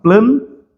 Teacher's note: Esse AN aqui, ele simplesmente indica, esse N, na verdade, ele simplesmente indica a nasalização do A